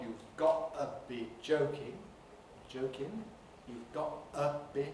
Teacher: This is the process I call post-glottal schwa deletion. Namely, when you have T pronounced as a glottal stop, and the next sound is schwa, then you can lose the schwa before a following consonant.